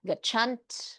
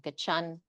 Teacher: Original final consonant clusters are reduced to the first consonant of the cluster. So we wouldn't have gachant, we just have gachan.